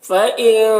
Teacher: نون کے آواز کو ناک میں چھپا کر پڑھیں گے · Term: اخفا